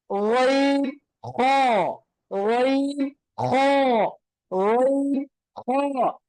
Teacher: இரண்டாவது வசத்துல் ஹல்க், தொண்டையுடைய நடுப்பகுதியில இருந்து வெளியாகக்கூடிய எழுத்து ஐன் ஹா, ஐன் ஹா, ஐன் ஹா. தொண்டையுடைய இறுதியில இருந்து வெளியாகக்கூடிய எழுத்து அக்ஸல் ஹல்க்